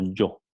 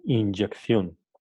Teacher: El sonido Y se transcribe como alófono Y africado, cuando está en posición inicial absoluta